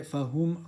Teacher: dhamma, so circle your lips.